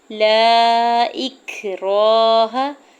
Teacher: لا اکراہ، لام کے اوپر زبر، ساتھ الف اٹیچ ہے اور اس کے اوپر مد منفصل ہے یعنی مد ہے، ٹھیک ہے۔ تو اس کو 4 سے 5 حرکت کھینچ کے ادا کریں گے، یعنی 4 سے 5 سیکنڈ کھینچنا ہے، ٹھیک ہے۔